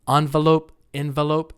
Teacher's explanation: Some Americans say envelope. That's fine too, as long as you stress the first syllable.